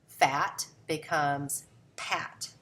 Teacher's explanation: So you notice that the P for F substitution here, these are still both voiceless consonants.